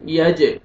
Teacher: جیم حروف قلقلہ میں سے ڈبل ساؤنڈ آئے گا